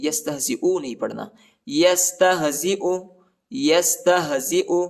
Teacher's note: یہ یا نہیں، یہ حمزہ ہے، اور اس کو کھینچنا بھی نہیں